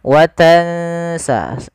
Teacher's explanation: kita langsung bacakan nunnya ke makhraj daripada huruf sin. Huruf sin itu ujung lidahnya. Makhrajnya dan ujung lidah kita di antara gigi atas dan gigi bawah itu ada tiga. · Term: ikhfa